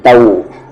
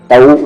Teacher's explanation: اب یہاں پر واو کو بولتے ہوئے لپس کمپلیٹلی راؤنڈ ہونے چاہیے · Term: ڈبلو ساؤنڈ